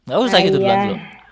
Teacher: huruf H itu penyempitan tenggorokan tengah kemudian dipaksakan keluar anginnya